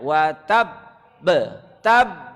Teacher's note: ditahan dahulu, baru dipantulkan